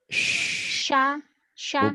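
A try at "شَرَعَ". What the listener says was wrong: Bibirnya jangan dimonyongin ya, buka lebar. Syaro'a. Kamu mau kayak penyanyi. Syalalala. Kayak lagi paduan suara. Jelek gitu mah. Syah. Biasa aja. Syaro'a.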